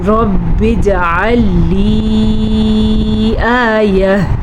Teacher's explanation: مد کو کھینچ کے پڑھنا ہے تقریباً 2.5 سیکنڈ تک